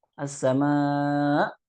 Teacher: Karena di situ juga dia sengaja, artinya berlebihan dalam mengucapkan hamzahnya, sehingga suaranya seperti ain.